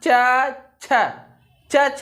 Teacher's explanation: च छ में हमारी जीभ तालु को स्पर्श करती है